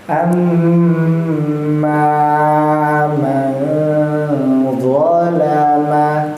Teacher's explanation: ada aliran angin yang keluar di antara kedua lubang hidung kita · Mimnya tadi sempat ditahan 2 harokat. Kemudian ketika mimnya berfathah juga dipanjangkan 2 harokat, maka bacanya amma, bukan amma, ya, panjangnya 2 harokat. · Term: gunnah